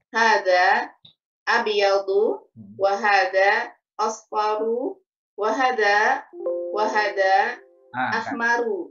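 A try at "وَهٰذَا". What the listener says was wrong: Wahada hanya panjang Bu. Wahada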